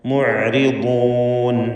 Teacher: നിസ്ബിയായ തഫ്ഖീം 3ാമത്തെ ലെവലിലുള്ള തഫ്ഖീമാണ് ബാദിന് നൽകേണ്ടത്. ഇസ്തിഅലാഇൻ്റെ ഹർഫാണ്.